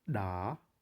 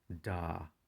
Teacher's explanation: So da is an implosive, which again you have to suck air in slightly before you release it.